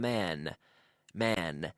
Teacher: my lips stay open because it's an N not an M